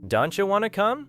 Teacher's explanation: The sounds T and Y meet. Together they can create a chi sound. Don't you becomes don'tcha.